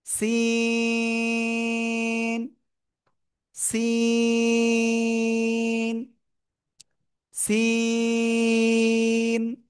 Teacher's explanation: আমরা তিন আলিফ না চার আলিফ টানে উচ্চারণ করব